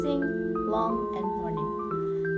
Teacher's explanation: The back part of the tongue touches the soft palate